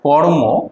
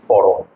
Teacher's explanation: এটাকে আমরা সহজ উচ্চারণ করার জন্য এটাকে করেছি কি করম। এখানে মাঝখানে একটা আমরা অ নিয়ে এসেছি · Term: স্বরভক্তি